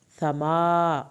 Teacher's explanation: ما کی کھڑی زبر کو کھینچیں